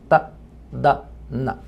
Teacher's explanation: Se coloca la punta lengua detrás de los dientes y se pronuncia ta, da, na. Pero en inglés esos tres sonidos son alveolares. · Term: dentalmente